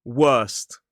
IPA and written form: wɜːst (worst)